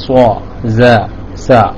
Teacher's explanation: താഴെയും മേലെയും ഉള്ള മുൻപല്ലുകളുടെ നമ്മുടെ മുൻപല്ലിന്റെ ഇടയിലൂടെയാണ് ആ ശബ്ദം പുറത്തേക്ക് വരുന്നത് ശബ്ദം വരുന്നത് നമ്മുടെ മുൻപല്ലിന്റെ രണ്ടിന്റെയും ഇടയിലൂടെയാണ് സ്വ സ എന്ന് പറയുന്നത് എന്നാലാണ് നാവിന്റെ കൂർത്ത അറ്റം നാം അതിനുവേണ്ടി ഉപയോഗിക്കുന്നുണ്ട്